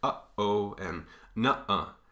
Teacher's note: This is called a glottal stop, and you get it in words like, in between words, you get it like uh-oh and nuh-uh. Right in between those two sort of syllables, you get a stop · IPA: /ʔ/